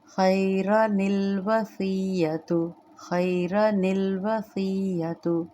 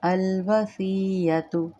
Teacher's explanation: روانی سے پڑھیں گے تو نون قطنی کے ساتھ ملا کے پڑھیں گے، اگر میں نے سانس روک لی ہے، توڑ گیا ہے، سانس رک گیا ہے، تو پھر میں اس کو الوصیۃ الگ سے پڑھوں گی، پھر نون قطنی نہیں ادا کی جائے گی۔